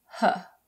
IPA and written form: hə (her)